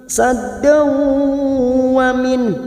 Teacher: fathah tanwin bertemu waw idgham bi gunnah, masuk ke huruf waw dan ditahan 3 harokat